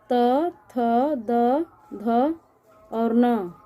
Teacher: दंतय ध्वनि, त वर्ग में दंतय ध्वनि आती है। त वर्ग की सभी ध्वनियों को हम दांत के स्पर्श से उच्चारित करते हैं, इसलिए इसको दंतय ध्वनि कहते हैं